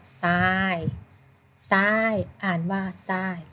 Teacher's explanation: ทรออกเสียงเป็นซอโซ่ค่ะ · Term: ควบกล้ำไม่แท้